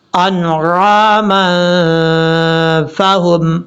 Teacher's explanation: لہم مما عملت ایدینا انعاما فہم، نون کے بعد عین ہے، یہاں پر عین کو کلیئر کرنا ہے، حمزہ کی آواز نہیں آنی چاہیے